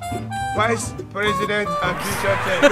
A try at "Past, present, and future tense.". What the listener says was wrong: It's not president, it's present.